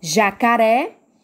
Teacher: Jacaré, qual é a sílaba mais forte? É o ré. Então, jacaré é uma palavra oxítona, tá certo?